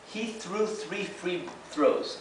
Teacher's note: la dificultad radica en la alternación del sonido de la TH y intercalar esto que es una F